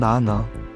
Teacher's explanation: 혀끝이 윗잇몸에 닿으면서 나는 소리. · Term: 니은 소리